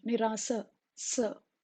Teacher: It is pronounced without touching the tip of the tongue to the lower teeth, just like a hissing sound